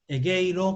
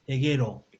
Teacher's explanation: lo que sería un diptongo, desaparece el diptongo y se hace una vocal más corta